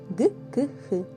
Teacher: задньоязикові приголосні звуки утворюються в результаті зближення задньої частини язика із заднім піднебінням